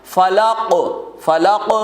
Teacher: فلق, فلق میں کس میں قلقلہ ہوگا؟ قوف میں قلقلہ ہوگا